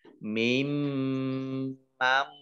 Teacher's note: nun sukun bertemu dengan huruf mim ini bacaan idgham bi gunnah ya masuk dengan mendengung